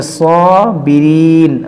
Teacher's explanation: اس کو کھینچیں گے صابرین، یہاں پر مد عارض ہوگا